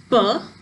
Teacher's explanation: when producing the sound p, the lips come together and the air is released with a puff of air